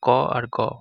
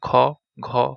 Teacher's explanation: ক আর গ হলো অল্পপ্রাণ, এখানে বাতাসের চাপ কম হয়। আর বর্গের দ্বিতীয় এবং চতুর্থ হচ্ছে যেমন খ, ঘ হলো মহাপ্রাণ, এখানে বাতাসের চাপ বেশি